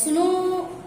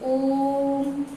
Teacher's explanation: जहां पर हम खींच के बोलें तो प्लुत स्वरों के उच्चारण में ह्रस्व स्वरों से 3 गुना समय लगता है